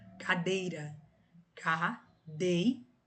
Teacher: A mais forte é a penúltima, cadeira. Então, por isso ela é paroxítona e não tem acento.